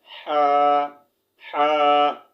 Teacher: हलक के दरमियान वाले हिस्से से अदा होते हैं, ठीक है। Middle of the throat